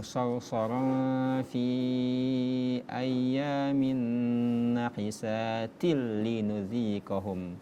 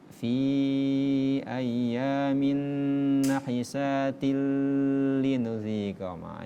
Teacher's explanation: Tadi pada ayat ke-16 itu kita temui ghunna sarsara fi ayyamin nahisatil linudziqahum kasrotain ataupun fathatain, dummatain, kasrotain ketemu dengan lam yang bertasydid, maka itu dibaca ghunna, idgham bila ghunna, memasukkan tanpa dengung